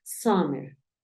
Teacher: como si tu intención fuese decir una a pero terminas diciendo una o